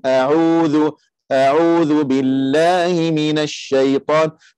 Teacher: makhraj yang kita nak sebut tu ialah ain dia tengah halkum